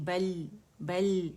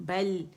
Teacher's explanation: بل باریک ہے، لام بھی باریک ہے، لام میں توسط ہے، آواز تھوڑی سی چلے گی. بل بل، اس طرح نہیں، بل بل نہیں کریں گے، قلقلہ نہیں کریں گے.